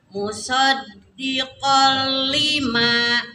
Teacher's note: Idgham memasukkan nun mati ke lam bila dengan tidak didengungkan.